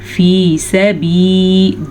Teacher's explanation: فی، فا زیر یا، فی سین زبر سا، با زیر یا بی، فی سبی، 2 یا مدہ ہیں تو دونوں کو کھینچ کے پڑھیں گے